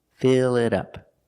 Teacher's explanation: We see the T sounds like a fast D.